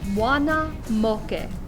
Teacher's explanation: pronounce them in english all of your a's are pronounced ah o is pronounced with a pure round o and e's are pronounced e this initial phrase all together is